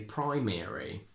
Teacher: But if we do have a rule, it goes that in 3-syllable words where the stress is on the first one and it contains a diphthong, you can go ARY. We say primary in American because we have the stress on the first syllable, pri, and we have the diphthong I.